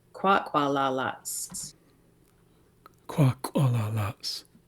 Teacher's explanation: there's an apostrophe after the S, so that is a glottal stop